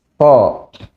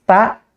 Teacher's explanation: Sama-sama syiddah dua huruf ini, tetapi posisi lidahnya berbeda. Yang satu terangkat, huruf to, sehingga dia tebal, dan huruf ta, dia tipis, lidahnya datar. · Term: isti'la